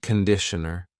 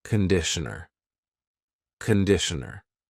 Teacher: The first vowel is a schwah.